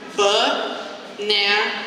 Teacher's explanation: The stress is on the second syllable, right?